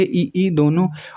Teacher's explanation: संवृत में बिल्कुल ना के बराबर मुंह खुलता है